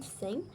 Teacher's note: The theta as in thing is voiceless sound.